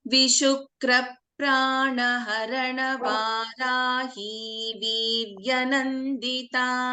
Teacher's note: So in Vishukra, see, ka is getting doubled.